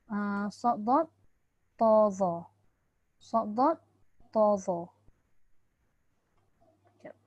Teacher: Ketika kita menyebut sad, dad, ta, dha tu pangkal lidah kita tadi terangkat lidah hampir menutupi langit-langit. Maknanya sad, dad, ta, dha tu dia melekat. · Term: itbaq